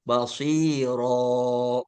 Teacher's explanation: Kalau wakaf harus diiwadkan. Nun sukunnya dibuang, diganti dengan alif mad yang memanjangkan huruf yang bertanwin itu. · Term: mad iwad